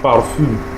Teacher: The nasal sound is on the last syllable, while the vowel on the fourth syllable is pronounced with a short and sharp intonation.